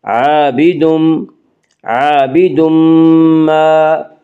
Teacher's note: عابد ما میں ادغام مع الغنہ ہوگا